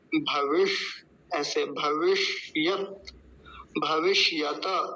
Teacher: बीच में जो मूर्धन्य सकार है आधा है आधा ही बोलेंगे और त का भी हलंत है